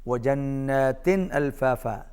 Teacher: نون پر تشدید ہے، غنہ ہوگا